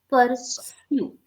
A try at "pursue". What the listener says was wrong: No, you are still saying sure. It should be sir. Okay, there is a difference.